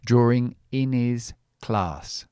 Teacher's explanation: I eliminate the h. This is called elision in phonetics.